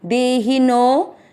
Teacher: आपको नो की मात्रा को लंबा खींचना है, दे ही नो। फिर मात्रा के अंदर का आधा स नो के साथ करना, दे ही नोस।